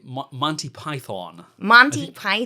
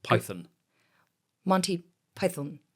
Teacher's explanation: With a long O at the end of Python, whereas by English accent, it's more of a schwa. It's more of that neutral, colourless vowel